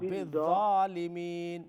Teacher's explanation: ذا اوپر کی طرف آواز لے کے جائے۔ ذا میں استعلاء کی صفت ہے